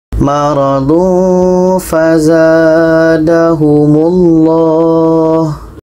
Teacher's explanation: Tanwin bertemu fa, dengung.